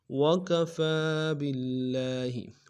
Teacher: وکفا میں فا کے اوپر کھڑا زبر ہے، ایک الف دال میں کھینچیں گے